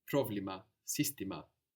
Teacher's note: You may notice that the accent is at the beginning of the word